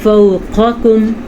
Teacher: ایک موٹا قاف ہے دوسرا باریک ہے تو ہم نے دونوں کو ٹھیک طریقے سے نکالنا ہے۔